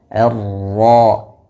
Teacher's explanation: Pada kata ar-rajim huruf ra tasdid berharokat fathah, maka ditafkhimkan, dibaca dengan tebal.